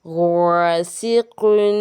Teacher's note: अलिफ से पहले गैन हरूफ मुस्तलिया यानी कि पुर हरूफ में से, तो अलिफ क्या हो जाएगा, पुर, तफ़ख़ीम का कायदा।